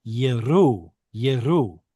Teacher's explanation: There is no guttural. There is no glottal stop here.